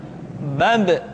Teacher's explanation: huruf ba huruf ba dikeluarkan dengan cara merapatkan kedua bibir kita ba bi bu ketika mati maka terdengar suara pantulan bab kesalahan sering terjadi seringki ba lupa untuk dipantulkan suaranya perhatikan